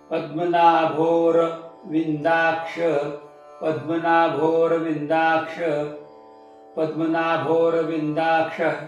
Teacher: नाभोर ना भो दोन्ही दीर्घ, थोडा अवग्रह, त्याचा उच्चार थोडासा लांबवायचा आहे